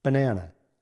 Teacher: The schwa sounds like a quick soft uh or e sound. You can hear it in the middle of the word banana.